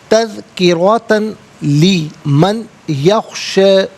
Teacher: تذکرۃ میں را پر زبر، را کو پر کر کے پڑھیں گے. تا پر 2 زبر کی تنوین ہے، تنوین کو لام کے ساتھ ملا کر لام کی آواز کو ادا کیا جائے گا.